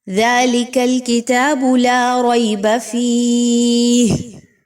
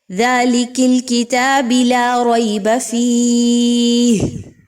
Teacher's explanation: اب اس کو کوئی شخص پڑھے، ذَلِكَ الْكِتَابِ لَا رَيْبَ فِيهِ، تو اس نے کیا کیا؟ کاف کی زبر کو کاف کی زیر میں بدل دیا غلطی سے، با کی پیش کو با کی زیر میں بدل دیا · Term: لاحن جلی